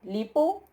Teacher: Y también se las subrayo, no por eso, porque eso es el tema que ya ustedes ya conocen, sino que se las subrayo porque es una forma que tiene acentuación fija. Tiene acento fijo sobre justamente ese diptongo u